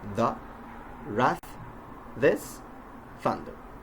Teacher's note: it is produced by the friction of air coming out between the teeth, and with the tip actually trying to stick the tongue out between and biting down as th. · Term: th sound